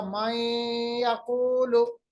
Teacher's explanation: एक तो हमने मिलाया, इदगाम किया, दूसरा हमने गुन्ना भी किया, नाक के बांसे में आवाज को ले गए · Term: इदगाम बगुन्ना